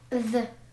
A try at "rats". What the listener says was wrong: Нет, С. Оно может звучать как З и как С. Поэтому мы здесь добавим. Которое может звучать как. Ну, вот здесь. З и как С.